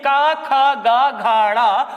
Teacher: कंठ में बल पड़ रहा है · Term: कंठ व्यंजन